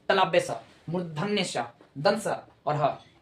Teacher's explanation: उसका मतलब ये होता है कि जहां घर्षण होगी वहां से जो हवा होगी एकदम गर्म वाला, यानी गर्म हवा से जो आवाज निकालेगी, घर्षण होगा, घर्षण से वायु क्या हो जाता है, गर्म हो जाता है, और आवाज निकलेगी तलाब्य स, मूर्धन्य स, दंस और ह। ये चारों जो है निकलता है घर्षण के दम पे, और घर्षण से क्या हो जाता है, वायु ऊष्मा जो होता है एकदम गर्म हो जाता है। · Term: उष्म व्यंजन